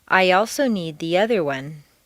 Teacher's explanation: After a long E sound, your lips will be pulled back far enough to create a Y glide or liaison